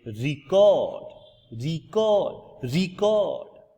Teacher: a device for a recording sound when the stress is on the first syllable so we say record record record or the act of recording